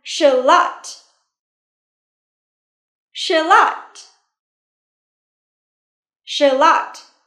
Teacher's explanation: Trọng âm rơi vào âm tiết thứ hai nha.